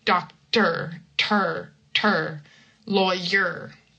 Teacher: It's kind of like you take a little bit of an opening between the T and the R, but it's not like a real vowel.